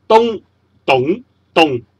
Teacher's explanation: 东懂动全部都是高音，不过东就是高音打平，懂就是高音再升，动就是高音落下来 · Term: 音平、音上和音去